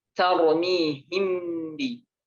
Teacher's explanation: mimnya ini serasa masuk ke ba begitu, serasa samar seperti ba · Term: ikhfa syafawi